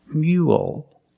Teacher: work hard so remember mule has the yes sound me mule finish with a dark L because the L's at the end of the word after a vowel